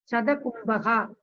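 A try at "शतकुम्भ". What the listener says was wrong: Shatakumbha. I think still you have the problem of Katora Vyanjana and Mridu Vyanjana. It is not Shatakumbha. Shatakumbha.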